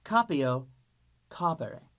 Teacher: Notice how I'm making that e in the infinitive short. That is the reason why these forms take fourth conjugation forms because that e is soft just like the third conjugation. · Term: short, soft E